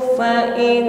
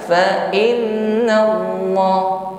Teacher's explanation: Di sini derajat dengungnya yang paling sempurna ya, guna akmal, sempurnakan dengungnya, ditahan terlebih dahulu, jangan terburu. Bukan fa innallah ya, ini terlalu cepat, dengungnya belum sempurna ya. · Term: gunnah musyaddadah